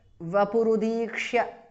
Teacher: Anuswara changes to the nasal of va. Vapuhu, Visarga changes to repha. Udikshya, vapurudikshya, because of Sandhi.